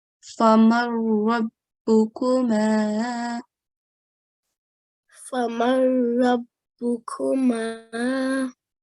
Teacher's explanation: So in the next example, we have noon sakin followed by a ra mushaddad this time, but the rule is the same. The rule is idgham kamil, so no nasal sound.